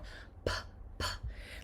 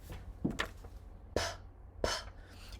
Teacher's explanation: if you feel your throat, there is no vibration, or it's very, very soft. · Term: voiceless consonants